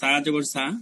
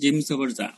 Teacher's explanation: জিহ্বার নিচে, নিচের দাঁতের পেটের কাছে রাইখা মুখ বন্ধ করে সা উচ্চারণ হয়, আর জিম হচ্ছে জিহ্বার মধ্যভাগ তালুতে লাগায়।